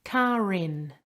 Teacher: a word after it starting with a vowel for example carin we use the ur to link to the vowel